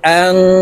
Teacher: নুন সাকিনের পরে ইকফার হরফা আসছে তাই এই নুনকে নাকি এর ভিতরে লুকাইয়া গুন্নার সহিত পড়বো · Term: ইকফা গুন্না